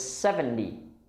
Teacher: 70, we stress the first part of the word. We stress the 7. And the second part of the word sounds like D, not T.